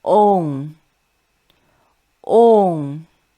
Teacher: Ong is not on as in English, but you should voice u, keep the tongue position to then pronounce the velar nasal.